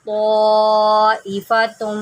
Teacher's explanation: یہاں پر دیکھیں یہ مد ہے، یہ مد متصل ہے، اس کو ہم نے اڑائی الف کھینچ کے پڑھنا ہے